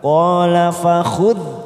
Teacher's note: dal sukun bukan qolqolah, maka kita tahan jangan sampai memantul.